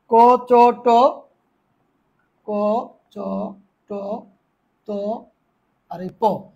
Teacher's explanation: এগুলো হচ্ছে অঘোষ অল্প প্রাণ ধ্বনি